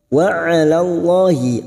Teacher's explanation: lam jalalah yang sebelumnya fathah kita baca tafkim